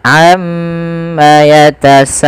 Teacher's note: Karena sa di sini wajib 4 harokat.